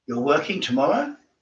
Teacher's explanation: Again with the questions, upward inflection for uncertainty.